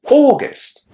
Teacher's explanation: August, similarly to daughter, is pronounced with a long o at the beginning.